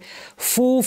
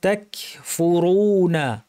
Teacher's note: তাক, এখানে কাফ থেকে বাতাস বের করতে হবে। ফু, ফায়ের আওয়াজটা যেন প্রচুর আওয়াজ, বাতাস থাকে, ফ্যাসফ্যাসে আওয়াজ হয়, এবং রুটা যেন ভারী হয়।